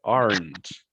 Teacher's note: No decimos aren't, porque esa E es muda. Esa E no la pronunciamos, solo pronunciamos el sonido de la N y de la T.